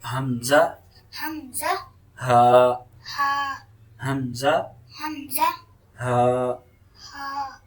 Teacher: So Hamza and Ha is produced from lower throat.